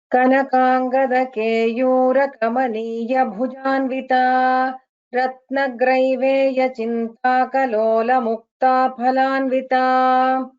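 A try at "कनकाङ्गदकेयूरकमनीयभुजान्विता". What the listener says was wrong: Uttamam Bhagini, you chanted well.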